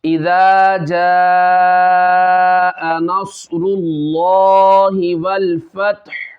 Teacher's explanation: ہا ظاہر ہوگا اس میں لیکن اس کے اوپر والی جو حرکت ہے پیش وہ ختم ہو جائے گی